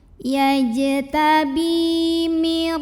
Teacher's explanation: Karena ada ya sukun yang didahului baris kasroh. Maka cara bacanya ba ini dipanjangkan 2 harokat. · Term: mad tabi'i